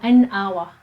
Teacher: we say n hour because the pronunciation we drop the h